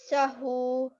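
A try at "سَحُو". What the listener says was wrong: Very good tha sound there. Elongate your hu slightly longer. So sahu.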